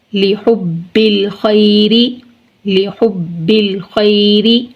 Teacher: پہلے فتحہ ہے، یا لین نرمی سے ادا کریں گے۔ آگے را متحرک ہے اور اس کے نیچے کسرہ ہے تو اس کو باریک پڑھیں گے · یا ساکن سے پہلے فتحہ ہے، یا لین نرمی سے ادا کریں گے ۔ آگے را متحرک ہے اور اس کے نیچے کسرہ ہے